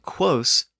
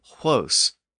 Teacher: within the Germanic languages, that original K sound shifted to an H sound, and quos became huos.